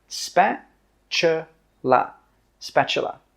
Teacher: The T sound is actually pronounced as a CH sound.